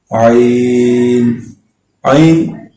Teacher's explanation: عین بالکل آپ نے حلق کے اندر سے پڑھنا ہے، یہ حروف حلقی میں آتا ہے۔